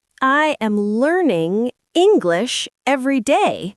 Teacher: The stress is on learning and English.